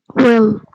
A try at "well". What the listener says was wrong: Well. Well. So it's not will.